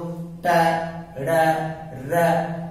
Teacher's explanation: इससे आगे का ये वाला भाग जहां से हमारी जीभ को मोड़ो तो फिर टकराए, जैसे बोलो ट ड र, तो जहां पे जीभ मुड़ करके टकराती है उसे बोलते हैं मूर्धा